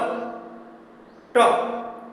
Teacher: जीभ मुड़कर ऊपर स्पर्श कर रहा है, वही मूर्धा है।